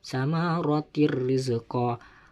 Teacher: Jadi harus dimasukkan suara tanwin kasroh tersebut ke huruf ro pada lafadz samaratir rizqa. Tidak boleh berdengung, cuman dimasukkan aja suaranya seakan-akan bertasdid